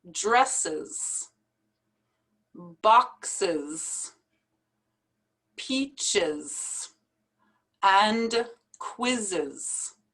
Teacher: we add the es so we would say dresses and we pronounce it as a separate syllable